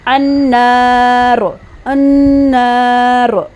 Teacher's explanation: اب نون پر جو زبر ہے اس کے ساتھ پڑھیں گے، نون علی زبر نا، انا، نون شد پہ گنہ ہو رہا ہے اور نون کے ساتھ الف بھی آ رہا ہے، الف مد، اس کو 2 حرکے کے برابر لمبا بھی کریں گے، النار النار۔